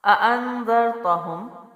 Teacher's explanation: اانذرتہم، آ پڑی حرکت، 2 بار حمزہ ہے، ایک دفعہ حمزہ کی شکل میں ہے اور ایک بار الف کے اوپر سائن ہے تو اس کو بھی حمزہ پڑھا جائے گا. حمزہ زبر آ، حمزہ زبر آ، 2 دفعہ پڑھیں گے اور جلدی چھوڑیں گے. ان، لیکن دوسرا حمزہ جو ہے نون سے ملے گا کیونکہ اس پہ جزم ہے.